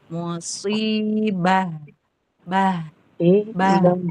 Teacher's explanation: tapi ketika berhenti dia berubah jadi ha makhrajnya ha kemudian sifatnya juga sifat ha begitu